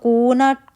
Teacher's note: کو واو مدہ 2 کاؤنٹ اور نا زبر